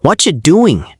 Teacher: When what ends with T and you starts with J, they blend to whatcha.